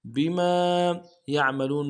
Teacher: بیما یعملون میں یا کو عین کے سامنے لانا ہے، عین کو موٹا کریں گے، اور لام کو واو کے سامنے لانا ہے، واو مدہ ایک الف انداز میں کھینچیں گے